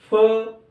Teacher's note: फ भी कहते समय हमारे दोनों ओठ चिपक रहे हैं। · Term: ओष् वर्ण